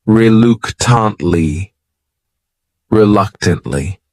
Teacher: this word has four syllables and the stress is on that second syllable